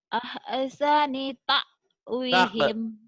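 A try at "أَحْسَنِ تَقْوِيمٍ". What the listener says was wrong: Bukan tak. Takwimin ya nih. Ini mim.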